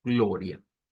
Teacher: una R redonda o la R suave del español o la R flap que se le llama en el inglés.